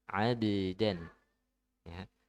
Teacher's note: Ba juga qalqalah ya, ditipiskan.